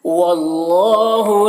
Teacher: اللہ کلام کو پر پڑھیں گے، اللہ کلام سے پہلے زبر ہے